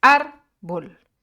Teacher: Porque su acento, su sílaba tónica, se encuentra en la penúltima sílaba